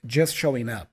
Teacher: so first of all the T for just is not really there it's a stop consant just and then the G for showing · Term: connected speech